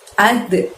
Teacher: ada dal sukun, maka kita mantulkan pengucapannya